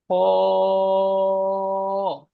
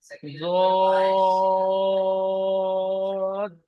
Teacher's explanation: এই 3টি অক্ষর উচ্চারণ করবার সময় ঠোঁট দুটি গোল আকৃতি হবে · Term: মুখ গোল করে